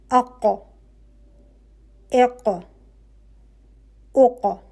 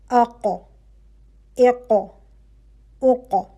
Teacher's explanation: جب آپ کی زبان کی جڑ اوپر نرم تالو پہ لگے گی قوت کے ساتھ، وہ نرم تالو جو حلق کے فوراً بعد ہے اوپر، تو وہاں سے حرف ق ادا ہوگا، یہ ق کا مخرج ہوگا۔